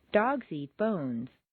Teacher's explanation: when you're making a statement for the first time, you'll stress the nouns. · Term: Statement intonation with nouns